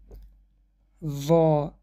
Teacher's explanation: نوک زبان در بین دندان های پیش گذاشته می شود. هنگام تلفظ این حرف زبان به دندان های پیش بالا پخش کرده می شود و قفای زبان به بالا برداشته می شود. این حرف صفت استعلا را دارد، یعنی قفس خوانده می شود. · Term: مخرج حرف ظا